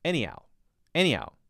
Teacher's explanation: when he says anyhow it's not like any how with a clear h sound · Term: soft h